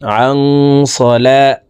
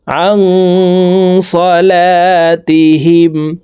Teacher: এই নুন সাকিনকে নাকের ভিতরে লুকাইয়া গুন্নার সহিত পড়তে হবে